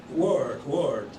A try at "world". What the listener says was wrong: No, but you got to hit the L. Hit the L strong. Yeah, capital L in there. Put a small W, small R, capital L, small D. World. World. It's maybe easier in American English. World.